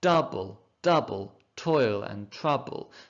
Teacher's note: the first syllable is stressed the second is unstressed and that repeats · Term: trochaic tetrameter